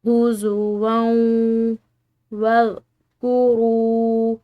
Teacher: را کے بعد واو ساکن کی وجہ سے اس کو ہم نے ایک الف کی مقدار لمبا کھینچ کر ادا کرنا ہے